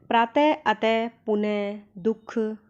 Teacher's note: विसर्ग का उच्चारण ह व्यंजन के समान होता है। ह, हल्के से ह की आवाज़ आती है।